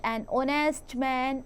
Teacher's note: honest o sound आ रहा है बच्चों, h sound नहीं आ रहा because h is silent